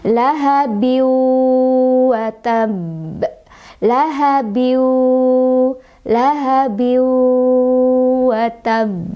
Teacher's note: Biu, sambil berdengung, bigunnah, dengan dengungan ya. Jadi dengungannya ditahan, boleh 2, boleh 3, boleh 4.